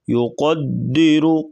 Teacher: را کے اوپر پیش ہے تو را کو بھی موٹا کر کے پڑھیں گے